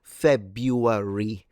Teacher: So I stress it at the beginning.